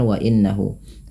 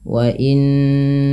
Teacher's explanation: Pada lafal wa innahu tahan bunyi suara nunnya sepanjang 2 harakat karena ia bacaan gunnah.